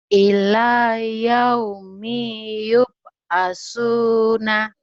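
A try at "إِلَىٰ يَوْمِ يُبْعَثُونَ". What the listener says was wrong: ila ini ibu ikrot 3 harus dimantepin nih. Panjang pendeknya masih ketahan. Harusnya ila yaumiyub. Yaumiyub. Jadi kalau yang pendek nggak boleh. Ila yaumi nggak boleh. Ila yaumiyub. Yaumiyub asuna.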